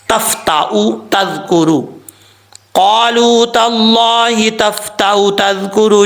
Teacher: حمزہ کی آواز آئے گی، لیکن اس کو لمبا نہیں کرنا۔ اگر آپ کوئی سوچتا ہے کہ واؤ کی وجہ سے لمبا کریں گے تو ایسا نہیں ہے، جب واؤ پڑھا نہیں جا رہا تو پھر اس کو لمبا کرنے کی ضرورت نہیں ہے۔